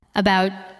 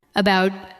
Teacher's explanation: We do not usually say every part with equal strength. We say about with a light first sound and a stronger second part.